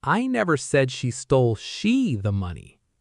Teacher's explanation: Stress on she. This means someone stole it, but it was not her. Someone else.